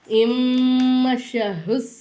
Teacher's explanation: இம்முஹுஷரு அப்படின்னு நம்ம சொல்லணும் புரியுதுங்களாமா அலிஃப் கொண்டு வந்து மீம்ல ஜாயின் பண்ணனும் சத்து பெற்ற எழுத்துக்கு முன்னாடி உள்ள எழுத்துக்கு சுக்குன்னு வந்திருக்கிறதுனால இந்த நூன் உச்சரிப்புல வராது